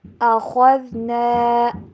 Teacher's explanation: خا کو موٹا کر کے پڑھیں گے کیونکہ یہ ہمیشہ بولڈ لیٹرز میں ہوتا ہے، اس کو موٹا کر کے ہی ہمیشہ پڑھا جاتا ہے.